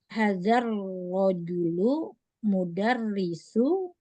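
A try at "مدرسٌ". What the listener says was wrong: Nah, mudarisu apa sun?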